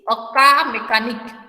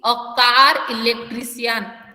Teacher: CAR कार है इसको pronounce करते टाइम रॉ को क्लियरली प्रोनाउंस करूंगी क्योंकि it is followed by एन vowel sound